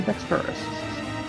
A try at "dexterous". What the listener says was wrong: Wrong emphasis on the wrong syllable.